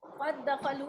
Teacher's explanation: क़द दखलू में दाल और दाल का इदगाम हो रहा है, दोनों एक ही जैसे हैं, दोनों मखरज और सिफात में एक जैसे हैं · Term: इदगाम ताम